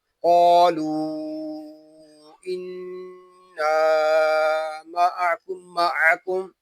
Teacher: یہاں قاف حروف مستعلیہ میں سے ہے، اس کو پوری یعنی موٹا پڑھیں گے